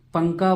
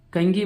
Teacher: तनवीन और नून साकिन में जो नून की आवाज़ आती है उस नून की आवाज़ को नाक में छुपाना है।